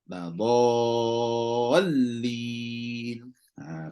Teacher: Situ nabrunya, naikkan suara dhall. Bukan dari awal naik bukan, naik kat hujung tu je.